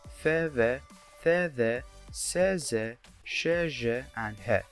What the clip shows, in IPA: f v, θ ð, s z, ʃ ʒ, h